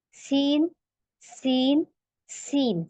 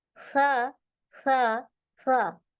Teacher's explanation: सा हमारा बहुत लाइट लेटर है आप उसमें सीटी नहीं देंगी